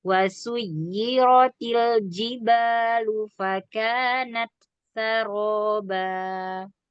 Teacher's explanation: intonasinya mau turun karena sampai ayat 20 kita wakaf selesai bacaannya.